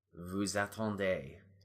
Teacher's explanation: elision with the S in vous to the vowel sound in attendre. Vous attendez.